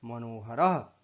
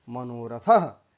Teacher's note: तो अब देखिए यहाँ पर मनः में विसर्ग के पहले न में अ है, इसके बाद ह आया है, तब विसर्ग का उ हो गया और अ और उ मिल करके ओ हो गया